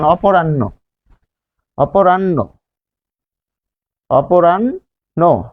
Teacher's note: এর উচ্চারণ হচ্ছে ন এর মহাপ্রাণ রূপ, ন দুইবার উচ্চারিত হয়।